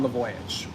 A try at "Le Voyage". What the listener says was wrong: Le Voyage, which is a restaurant. It sounded like you said The Voyage. Le Voyage.